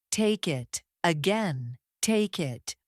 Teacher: Instead of saying take it with a pause, Americans say take it all as one movement. The K connects directly to the vowel in it. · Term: linking consonants to vowels